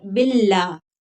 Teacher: अल्लाह का लाम जो है वो बारीक पढ़ेंगे क्योंकि पिछले हर्फ के नीचे जेर है। बिल्ला, मोटा करके नहीं पढ़ना, गलत है।